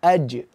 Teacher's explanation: ketika kita wakafkan sampai memantul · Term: Jim